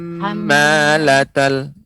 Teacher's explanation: mim bertasydid itu jangan terlalu cepat, akan tetapi dilambatkan